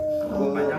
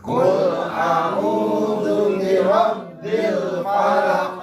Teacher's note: Qul a'udzu cuma 2 harakat segitu doang. Enggak usah panjang-panjang.